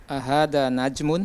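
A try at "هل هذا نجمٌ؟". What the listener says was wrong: Ahada najmun, mumtaz.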